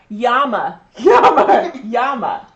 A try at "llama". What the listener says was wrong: L instead of a Y. Llama.